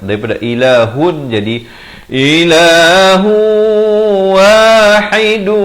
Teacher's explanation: Di sini masuk berserta dengung dua harakat, daripada ilahun jadi ilahu wahidu